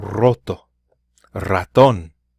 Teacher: you'll hear the double r if a word starts with the letter R in Spanish